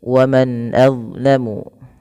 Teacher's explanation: hukum tajwidnya berupa bacaan izhar halqi, yaitu dengan memperjelas bacaan suara nunnya, diperjelas dengan baik. Karena izhar itu artinya berasal dari kata azharu yudhiru, artinya al-bayan wal wuduh, artinya jelas.